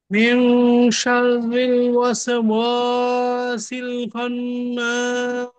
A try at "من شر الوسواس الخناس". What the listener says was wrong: ওয়াও এ গিয়ে আরেকটু খুলতে হবে। ওয়াসিল ওয়াসিল।